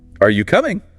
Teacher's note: Voice rises signals you expect an answer. · usually the voice goes up at the end